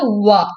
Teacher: வாயை குவிச்சு இப்படி விரிக்கணும், லிப்ஸை குவிச்சு விரிக்கணும்.